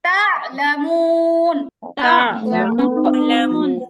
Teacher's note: হ্যাঁ প্রেস হবে মানে আইনের মধ্যে প্রেস হবে কিন্তু আইনটা নড়ে যাবে না